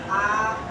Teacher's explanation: ह्रस्व स्वर से 2 गुना समय लगेगा तो उसे बोलेंगे दीर्घ स्वर